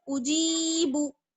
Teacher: Second line में आ जाइए, उजीबू, हमजा पेश उ, जीम को यहाँ से मिलाएंगे, जीम या उजी, बा पेश बू, उजीबू उजीबू। बा को बिल्कुल नहीं खींचेंगे, बस जीम को खींचना है